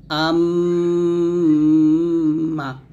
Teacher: মিম এর গুন্নাটা দুই ঠোঁট মিল করে মিমের গুন্নাটা করতে হবে